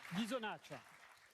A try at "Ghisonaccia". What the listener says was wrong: Ghisonaccia. On prononce pas le A. On l'aspire.